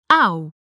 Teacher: you're starting from a tongue position of ah which is a lower tongue position that we start with in blouse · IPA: [ɑu̯]